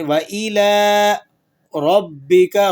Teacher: لام پر کھڑا زبر ہے، آپ اسے 1 الف کے برابر کھینچ لیں گے